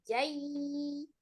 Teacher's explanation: Ketika ya sukun sebelumnya fathah itu i-nya sempurna turunkan bibir dan rahang bawahnya jai. Jadi bukan jai langsung ya dibentuk sama bibir yang diturunkan dengan rahangnya. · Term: harfulin